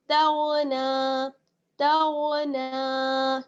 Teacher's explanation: پہ بلکہ غین، تاغ، تاغ، نون کھڑا زبر نا، تاغنا، تاغنا، نون کو کھینچنا ہے، کھڑی حرکت ہے اس پر